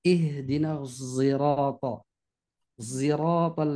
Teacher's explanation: menggabungkan dua huruf secara gerak bibir tapi suaranya satu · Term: ismam